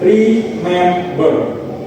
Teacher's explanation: The primary stress occurs on the second syllable, mem. The word follows a strong weak pattern where the stressed syllable is clearly more prominent than the others.